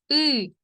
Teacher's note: звук и голосний тому що ми його вимовляємо без перешкод його можна проспівати